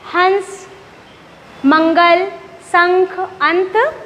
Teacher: तो जब हम अनुस्वार का उच्चारण करते हैं तो हवा कहाँ से निकलती है? नासिका अर्थात हमारे नाक से।